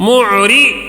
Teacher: را کو زیر ہونے کی وجہ سے باریک